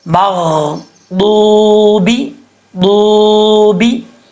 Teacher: آپ اس کو ملا کے پڑھیں گے، ضاد کے بعد کیونکہ واو ہے تو واو مدہ ہے، یہاں پہ ایک الف کی مقدار لمبا کر کے پڑھیں گے